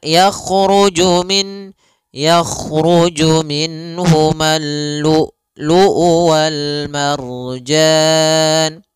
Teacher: Yang pertama adalah sifat jaharnya dan kedua sifat syiddahnya. Jahar itu tertahannya nafas, kalau syiddah adalah tertahannya suara. Maka lu'u harus tertahan. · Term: hamzah yang disukunkan